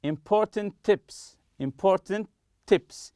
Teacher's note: Will give you important tips, as if it's just one T.